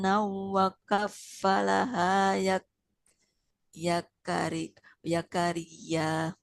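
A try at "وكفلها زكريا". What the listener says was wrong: Nah, nggak boleh ya kayak ini huruf zai. Wa kaffalaha Zakaria.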